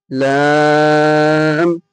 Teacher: জিভের আগার কিনারা এবং সামনের ওপরের দুই পাশের দাঁতের গোড়ার সাথে লাগিয়ে উচ্চারিত হয় লাম